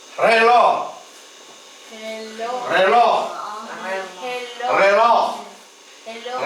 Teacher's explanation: Veja que eles falam relógio, reló. Cortam no finalzinho.